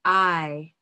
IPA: ai